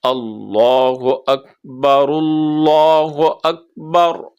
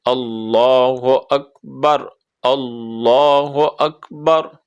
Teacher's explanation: اب جب یہ علیحدہ علیحدہ پڑھیں گے پھر تو آئے گا اللہ اکبر، لیکن جب ملا کے پڑھیں گے تو پھر یہ آئے گا اللہ اکبر۔ را جو ہے نا اس کو لفظ اللہ کی لام سے ملا دیں گے، بیچ میں جو لفظ اللہ کا الف کھڑا ہے اس کو ختم کر دیں گے، را کو لام کے ساتھ ملائیں گے، تو یہ بن جائے گا اللہ اکبر ایسے کر کے۔